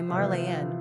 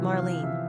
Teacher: the English cut the name to two syllables